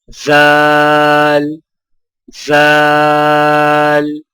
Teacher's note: زال کی ادائیگی میں زبان کی نوک کو سامنے والے اوپر کے 2 دانتوں کے اندرونی کناروں سے نرمی سے لگا کر باریک آواز میں پڑھیں